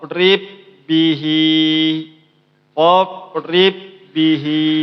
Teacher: ba yang pertama ini tidak dibaca dia langsung baca yang ba yang kedua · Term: idgham